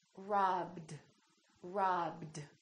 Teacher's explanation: voiced consonant the Ed becomes D